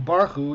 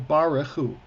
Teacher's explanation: They're saying a 3-syllable word is a 2-syllable word. They're saying barchu instead of barichu.